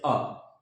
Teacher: ह्रस्व स्वर होता है उसके उच्चारण में हमारे मुख से जो प्राणवायु है यानी ध्वनि है वो बहुत अल्प मात्रा में निकलती है